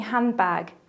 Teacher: notice how handbag loses the d · Elision is when sounds disappear in fast speech, like the example of handbag, where the d sound disappears.